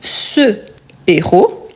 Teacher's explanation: car c'est un H aspiré, je ne le prononce pas, je dois marquer la pause.